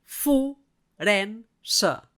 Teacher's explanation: E sona vocal neutra perquè és àtona